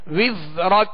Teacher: زا کو سیٹی کی آواز میں پڑھیں گے مگر باریک پڑھیں گے